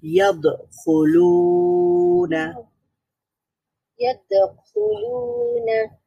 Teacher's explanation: আওয়াজ পুরোপুরি বন্ধ হয়ে যাবে, কিন্তু কলকলার হরফ হওয়ার কারণে আওয়াজটা আবার পাল্টা তৈরি হবে।